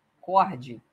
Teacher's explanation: a sílaba tônica é o co é uma palavra paroxítona